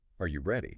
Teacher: These questions naturally rise at the end. Because the question is left completely open, you are waiting for confirmation. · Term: Yes goes up